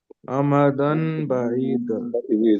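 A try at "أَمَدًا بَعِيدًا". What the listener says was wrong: نہ نہ، ابھی تو آپ نے آمدن نہیں پڑھا ہے، اس جی، آمدم، اس تنوین کو جو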